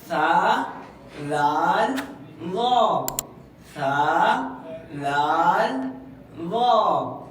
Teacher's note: اوپر والے دانتوں کے کناروں پہ زبان کی نوک لگے تو حرف ادا، تین حرف ادا ہوتا ہے۔